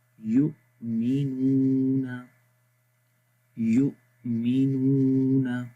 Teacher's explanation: حمزہ کی آواز کو دیکھیں، یو مخرج میں بند ہو رہی ہے اور وہ کون سی جگہ ہے؟ گلے کا سب سے نیچے والا حصہ